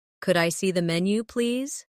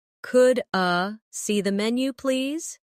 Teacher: In fast speech, could I sounds like could you.